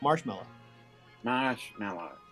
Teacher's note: we put the accent on the first syllable